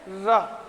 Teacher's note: लुंठित का अर्थ होता है, लुंठित का अर्थ होता है लुढ़कना। र जब बोलते हैं तो वो मसूड़े को छूते हुए दांत तक आता है वो, तो इसलिए बोलते हैं इसको लुंठित व्यंजन।